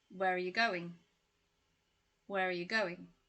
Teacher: we've got r which becomes uh you've got you which becomes ya